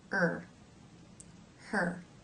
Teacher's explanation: The front of the tongue hangs down then, but it's drawn back a bit, so it's not touching anything.